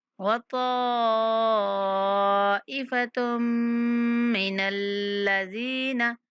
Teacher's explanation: کو پور پڑھتے ہوئے 5 سیکنڈ تک لمبا کریں گے اور تا کو میم کے ساتھ ملاتے ہوئے غنہ کے ساتھ ادا کریں گے